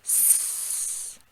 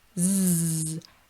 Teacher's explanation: S, no voice, Z, same mouth, add the voice